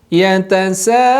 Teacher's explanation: Yaitu sahabat silakan bacakan 4 sampai 5 harokat. Tidak boleh kurang, juga tidak boleh lebih. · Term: tanda panjang